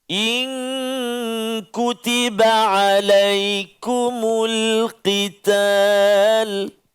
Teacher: So kena hati-hati, jangan qital tu jadi tipis. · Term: huruf qaf